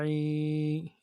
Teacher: یا مدہ ہے، ایک الف مدار میں کھینچنا، عین کو جماؤں کے ساتھ ادا کرنا۔